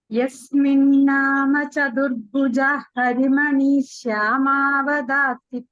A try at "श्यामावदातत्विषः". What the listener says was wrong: Vishaha. Chant it with the visarga. Remove the sandhi like we have always been doing. End of the pada. Remove the sandhi.